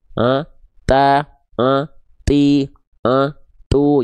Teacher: si ujung lidah kita tadi nempel ke pangkal gigi atas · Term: huruf ta